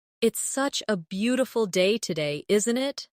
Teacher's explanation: Notice how the intonation rises at the end, making it sound like a friendly remark.